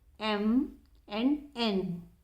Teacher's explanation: The Air Stream comes out of the mouth as well as from the nose · The sound that is produced when the air passes and escapes through the nose, as is the case of the sound M and N. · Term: nasal sounds